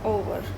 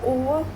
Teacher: तो जिस वॉवल पे ज़्यादा स्ट्रेस पड़ रहा है, फर्स्ट वाले पड़ रहा है ओवर, इसको हम खींच के बोल रहे हैं स्ट्रेस पड़ रहा है, तो ये तो हो जाएगा हमारा क्या, प्राइमरी स्ट्रेस, ये स्ट्रेस लेवल, क्योंकि इसको ज़ोर से बोला जा रहा है।